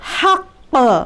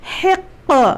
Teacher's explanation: दूसरा, निकलने की जगह बिल्कुल हलक से है, जो छोटी वाली पैलेट हमारी है, जिसको हम लोग तारक कहते हैं, छोटी ज़बान जिसको कहते हैं, हलक में, बिल्कुल ऐन हलक में बीच में, वहाँ से क़ाफ़ का मखरज है। अभी जैसे ही मैं क़ाफ़ पढ़ूँ तो मेरी आवाज़ ऐसा महसूस हो कि आवाज़ दोनों ऐसा टक्कर खाकर अलग हो रही है।